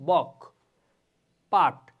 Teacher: উদাহরণ আমরা যদি দেখি যে বক শব্দের যে ক, পাঠ শব্দের ট, এই যে বক, আমরা কিন্তু প্রথমে বাতাসটাকে আটকায় ফেলতেছি তারপর উচ্চারণ করতেছি, কিন্তু যখন আমরা ক উচ্চারণ করি তখন স্বাভাবিকভাবে বের হয়। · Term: স্পর্শ ধ্বনি